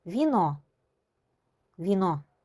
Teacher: V burada yumuşalır. Çünkü V'dan sonra i hərfi yazılıb.